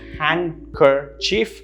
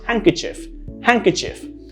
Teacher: there are three syllables but it's a hang not a hand